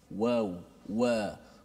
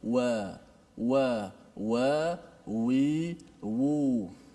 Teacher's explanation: huruf waw tetap dua bibir tapi kaedah dia agak berbeza, yang mana mulut kita digerakkan sedikit ke bahagian depan. Waw, wa.